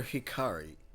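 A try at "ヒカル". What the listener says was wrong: No, Hikaru. Hikaru. The last letter in her last name is U. Hikaru.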